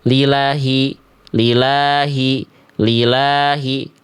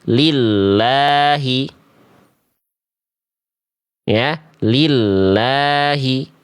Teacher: Lamnya ada tanda tasdid. Tasdid itu berarti dibaca lamnya ditekan dulu baru dilempar ke harakat fathah tegaknya. Maka jangan dibaca lilahi.